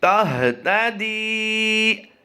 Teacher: ہا کی ادائیگی ہم نے سیکھا ہے کہ حلق کے نیچے والے حصے سے ادا کرتے ہیں